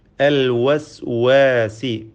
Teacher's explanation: വാവിന്റെ മഹ്റജ് ഉൽഭവസ്ഥാനം രണ്ട് ചുണ്ടുകളാണ് വാവ് ഉച്ചരിക്കുമ്പോൾ ചുണ്ടുകൾ വൃത്താകൃതിയിൽ ആകുന്നു